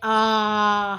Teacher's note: विवृत स्वर, है ना, बहुत अधिक खुला, जैसे बड़ा आ होता है आ, हमने बहुत सारा मुंह खोल के तब बोला